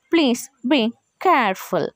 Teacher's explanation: ఇక్కడ మనము ప్లీజ్ బీ అన్న దగ్గర ఫాలింగ్, అగైన్ కేర్ఫుల్ దగ్గర పైకి వస్తుంది అనమాట మన టోన్ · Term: falling rising tone